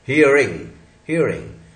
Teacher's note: तो अप्रोक्सीमेट जुबान उल्टी, टिप ऑफ द टंग जो है टर्न होके अंदर की तरफ जाएगी, तब वो एक छुपा हल्का सा नहीं दिखने वाला र बनेगा।